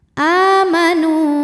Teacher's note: mad tabi'i dhahiri karena ada waw sukun didahului harokat dhammah, maka huruf nun panjang 2 harokat